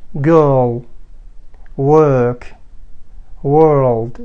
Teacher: بالنسبة للبريطاني فقط الفرق بأنه صوت الار ما يصير ظاهر، يعني صامت